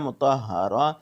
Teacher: تا جو ہے وہ ہا میں بدل جاتی ہے جب وقف کی صورت میں